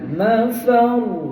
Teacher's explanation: mafar ra tu dibaca tebal